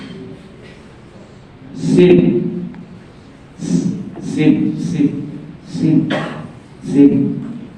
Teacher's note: huruf ini keluar dari ujung lidah yang menyentuh pangkal gigi seri atas